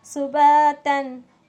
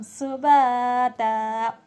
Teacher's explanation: سباتن نہیں پڑھا جائے گا سباتا وقف کی حالت میں